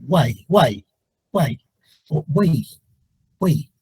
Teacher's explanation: las tres vocales se fusionan y se convierten en un solo sonido